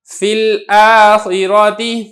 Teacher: یا ساکن مدہ ہے لہذا یہ یا حذف ہو جائے گا اور فا کو آپ نے لام کے ساتھ ملا کے پڑھنا ہے